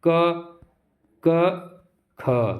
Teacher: देखिए ख जब बोलते तो हवा ज़्यादा निकलती है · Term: महाप्राण